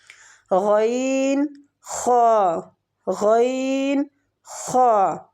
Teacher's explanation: مخرج نمبر 4، ادنیٰ حلق، یعنی حلق کا وہ حصہ جو منہ کی طرف ہے، مطلب منہ کے بالکل قریب ہے۔ ٹھیک ہے، منہ کی طرف والا حصہ، یہاں سے 2 حروف ادا ہوتے ہیں، غین، خا، غین، خا۔